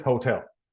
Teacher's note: The emphasis is in tel here, hotel.